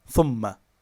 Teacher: The first syllable is thum, which is long, and it's followed by ma, which is short.